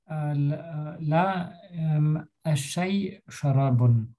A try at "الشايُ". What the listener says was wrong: أوكي، ein bisschen verlängern. الشاي، also الشاي شراب.